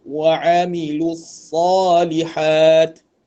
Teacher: sad dibaca tebal tanpa dimuncungkan bibir